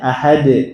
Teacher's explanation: Harusnya bagaimana? Ya, harusnya dibuang saja hamzahnya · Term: qalqalah